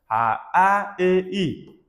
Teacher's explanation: A, E, I talaffuz qilganimizda esa, lablar ishtirok etmaydi, harakatga kelmaydi. Shuning uchun ham, bularni lablanmagan unli deyiladi.